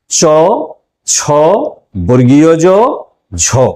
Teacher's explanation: ঘৃষ্টধ্বনি আমরা তাকেই বলবো যে ধ্বনিগুলো উচ্চারণের সময় ধ্বনিবাহী বায়ুর বাইরে বেরিয়ে আসার পথ সম্পূর্ণ বন্ধ হয়ে সামান্য উন্মুক্ত হয় এবং ওই উন্মুক্ত পথে ঘর্ষণের মতো করে ধ্বনিগুলি উচ্চারিত হয়